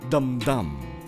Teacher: It's two strong syllables, but appears as a foot and usually appears at the end of the line. So this one is called dum-dum. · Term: spondy